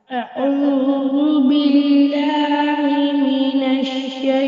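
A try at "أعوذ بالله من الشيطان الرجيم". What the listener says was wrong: लहर नहीं देनी मुन्ने, लहर नहीं देनी। अऊज़ु बिल्लाहि मिनश शैतान, ये तरतील नहीं है। तरतील का अंदाज में ना मतलब ठहर ठहर कर रुक रुक कर, स्लो, बिल्कुल स्लो, ठीक है? अऊज़ु बिल्लाहि मिनश शैतान।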